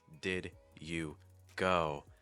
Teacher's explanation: I have these consonants, especially those D's in did, that are kind of blocking the breath and slowing me down. But I can try to soften those D sounds, and that's going to allow me to make things a little smoother.